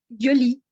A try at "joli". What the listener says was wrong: Ese joli que suene más, ¿cómo describir el sonido? Más con vibración. Para que no suene como joli, ¿no? ¿Se acuerdan cuando nosotros dicen je m'appelle? En lugar de yo m'appelle o je m'appelle. Y son dos sonidos distintos.